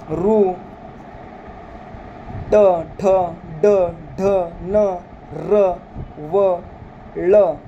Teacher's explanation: व ल यांचा उच्चार करताना आपल्या टाळ आपला जो मुर्धा असतो त्या मुर्ध्याला आपली जीभ स्पर्श करत आहे म्हणून त्यांचा मूर्धन्य मध्ये समावेश झालेला आहे